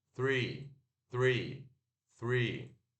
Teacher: se pronuncia o TH desvozeado, R puxado, e o I longo, E. R-E.